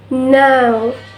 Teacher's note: This glides from A to U